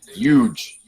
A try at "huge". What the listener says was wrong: You pronounce the H. You're doing it wrong. Huge.